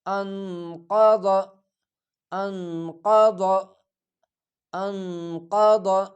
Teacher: کوشش کر لیا کرے زیادہ ضا کی طرف بھی مائل نہ ہو اور زیادہ دال کی طرف بھی مائل نہ ہو، جو درمیان میں ضاد ادا ہو جائے۔